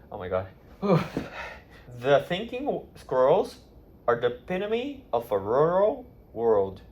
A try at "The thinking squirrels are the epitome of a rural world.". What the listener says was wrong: Pretty good.